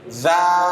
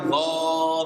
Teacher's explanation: Posisi lidahnya yang menggambarkan suara tipis adalah pangkal lidahnya rendah atau lidahnya rileks, jangan diangkat pangkal lidahnya.